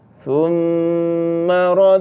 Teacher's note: ada lagi hukum dengung pada mim mim syaddah ataupun kita panggil wajib wajib dengung